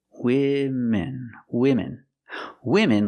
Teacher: use a short I sound like this is for both syllables